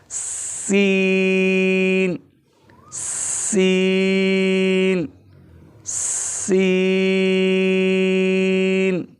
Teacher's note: سین تھوڑا دراز کر کے اس کو پڑھنا ہے، اس میں مد پیدا ہو رہا ہے، سین سین سین۔